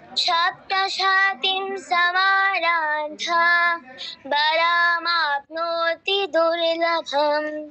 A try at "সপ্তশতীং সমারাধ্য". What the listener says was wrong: আচ্ছা, সপ্তশতীম নয় কিন্তু, সপ্তশতীন, সপ্তশতীন দীর্ঘটা কোথায় গিয়ে হবে? তয় দীর্ঘ ইকারে গিয়ে হবে, বাকিটা কিন্তু দ্রুত বলে যেতে হবে। সপ্তশতীন সমারাধ্য, এরকম।